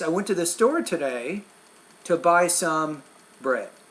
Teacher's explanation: once you get to the end of the sentence that's when your tone drops